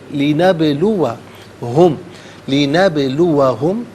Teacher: با ساکن ہے لیکن حرف قلقلہ ہے، تو با کی ادائیگی کے وقت آواز لوٹتی بھی محسوس ہونی چاہیے